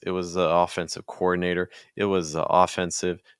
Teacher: we're going down in Pitch each time making them weaker